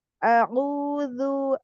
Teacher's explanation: A'udzu dari tengah tenggorokan ya, wasatul halqi.